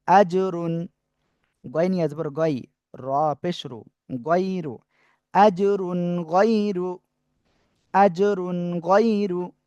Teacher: তানবিনের পরে ইজহারের অক্ষর গয়েন, স্পষ্ট করে পড়বো।